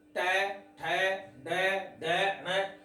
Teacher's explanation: हमारी ये जो जीवा है, ये जीवा अंदर घूमती है। अतः आप कह सकते हैं इसका मुड़ाव होता है अंदर। जब ये अंदर इसका रोटेट होता है तब ही हम इन वर्णों का उच्चारण स्थान सही कर सकते हैं। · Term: मूर्धा